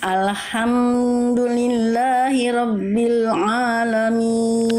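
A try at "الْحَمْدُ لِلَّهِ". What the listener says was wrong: tapi huruf mim sukunnya jangan ditahan Alhamdulillah jangan ditahan alhamdul langsung hamdu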